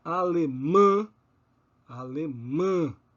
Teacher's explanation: essas vogais nasais estão nas respectivas sílabas tônicas das palavras alemã ombro penumbra elefante